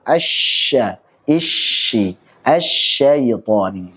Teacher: tersebarnya suara syin dari makhrajnya sehingga menabrak dinding-dinding dalam gigi-gigi atas dan bawah. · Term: tafasyi